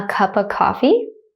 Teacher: Did you guys hear that schwa that ‘uh’ sound?